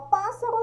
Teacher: pássaro já é a antepenúltima sílaba